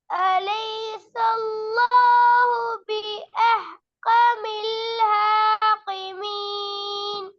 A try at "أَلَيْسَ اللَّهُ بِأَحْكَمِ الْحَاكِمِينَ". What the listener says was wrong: இன்னும் கொஞ்சம் ராகத்துக்கு எடுத்துக்கொள்ளணும். أليس الله بأحكم الحاكمين.